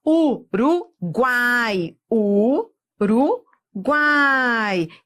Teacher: isso é um tritongo semivogal vogal semivogal